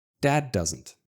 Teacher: But we have another D sound after it. At the end of dad, I'm in the position to pronounce the D. Dad D. But I stop the air and then I continue to push the air while pronouncing doesn't normally. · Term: D sounds